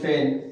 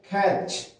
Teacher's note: শব্দের শুরুতে যদি ফ ছ খ থাকে তাহলে এটা অ্যাসপিরেটেড হবে, আর এটা যদি শব্দের শুরুতে না থাকে তাহলে এটা অ্যাসপিরেটেড হবে না।